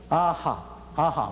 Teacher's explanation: 그 다음으로 이응과 히읗은 목구멍 소리죠